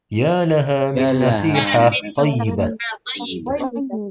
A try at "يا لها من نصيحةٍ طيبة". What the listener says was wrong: Ternyata nasihatin tayyibah. Nah, sama kayak baladin jamil. Nasihatin Jadi ternyata kasrotainnya dibaca ya. Ya laha min nasihatin tayyibah.